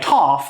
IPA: tɑf